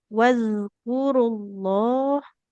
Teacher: Tadi hanya di huruf zal sukun ya. Harus lebih mengalir suaranya.